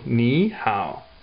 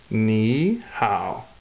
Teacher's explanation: When there's a word with 2 third tones together, instead of saying it as a third tone, you say it as a second tone.